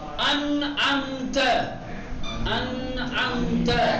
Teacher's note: اب نون کا اظہار کیا جائے گا، یعنی اس کے مخرج سے ادا کیا جائے گا